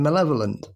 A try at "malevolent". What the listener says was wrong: There's an extra L keeps working its way in there. Oh, there is that extra L.